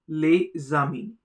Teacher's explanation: Here the S gets connected with A and produces a Z sound.